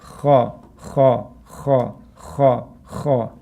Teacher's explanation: The kha, you're pushing air out.